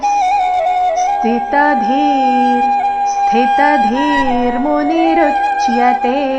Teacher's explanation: ಧೀರ್ ದೀರ್ಘ ಮಹಾಪ್ರಾಣ ಅದರ ನಂತರ ಅರ್ಧ ರ ಬರಬೇಕು